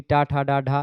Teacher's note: ये सब मूर्धा से बोले जाते हैं, मूर्धा पर जीभ जाकर के टच होती है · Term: मूर्धन्य व्यंजन